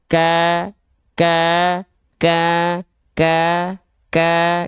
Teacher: Karena dari segi suara dia tertahan. Ada penekanan yang kuat sehingga tertahan suaranya, mengakibatkan nafasnya tidak lancar mengalir, tapi jadinya percikan nafas.